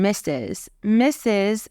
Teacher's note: note that you don't hear an R